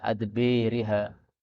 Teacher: Kemudian pada ayat 47 adbariha, ba-nya bisa dibaca imalah adbiriha